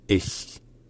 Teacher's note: Et enfin, finalement, le ch à la fin n'est pas comme le ch français, n'est pas un ch. C'est un ch, mais qui est prononcé plus au niveau du palais.